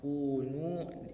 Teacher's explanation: Kemudian domah kunu, ini ada mad tabi'i, domah bertemu dengan wawu mati